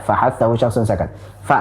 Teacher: pada hamas, kedua pita suara tidak bergetar. Kalau kita pegang pada leher kita, selama pas yang kita pegang itu adalah pita suara, wallahu alam yang tepat yang mana. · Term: huruf-huruf hamas